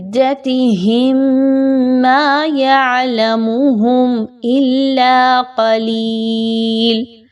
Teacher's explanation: ملانا ہے، قُل ربی اعلم بعدتهم ما يعلمهم الا قلیل، بعدتهم، میم ساکن کے بعد میم آ گیا تو یہاں پر اچھے طریقے سے غنہ کرتے ہوئے پڑھیں گے